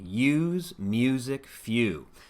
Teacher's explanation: Again, we want to make sure that we're using a little more space between the teeth. We want the lips to be rounding forward and relaxing back. This uses the oo vowel sound. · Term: u diphthong